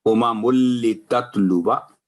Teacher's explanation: اسی طرح امم لتتلوا، تو یہ الف زائد ہے، تو یہاں جب اس کو کنٹینیو پڑھیں گے تلاوت کے دوران، امم لتتلوا آواز لمبی نہیں ہوگی، باقی الف کو سائلنٹ ہو جائے گا۔ لیکن اگر وقف کرنا پڑ جائے یہاں آیت کے آخر میں ہو تو امم لتتلو 2 سیکنڈ آواز اس کو لمبی کر کے اس کے ادائیگی ہوگی۔